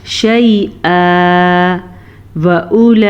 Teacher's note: मद को 5 सेकंड तक लंबा करना है और हमज़ा को नरमी से पढ़ना है क्योंकि ये हमज़ा है, आइन नहीं